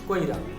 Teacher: কর পরে অকার উচ্চারণ হচ্ছে, তারপর হ্রস্ব উচ্চারিত হচ্ছে, তারপরে আকার উচ্চারিত হচ্ছে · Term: অপিনিহিতি